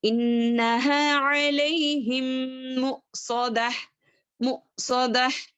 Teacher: हमजा को जो है साकिन लगा हुआ है तो वहां पर हम झटका देंगे